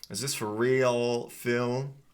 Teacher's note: make sure you're pronouncing that with a nice dark L sound as well.